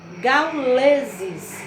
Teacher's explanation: quando pronunciamos a palavra gauleses, a sílaba tônica, lê.